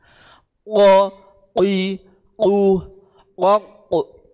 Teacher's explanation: langit langit yang di atasnya menjadi makhrajnya huruf qof qo Nggih qo itu dipangkal mengenai langit-langit yang di atasnya